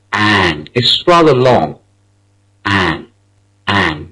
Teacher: The final R in the word is not pronounced. The first syllable, which is stressed, is an. It's rather long.